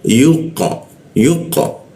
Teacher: mulut mulutnya tidak dimonyongkan tapi keluarnya o. O tapi mulutnya tuh ee a dia.